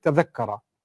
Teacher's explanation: ta and dha are from the same part of the tongue. Your tongue moves to the front of the mouth when you pronounce them.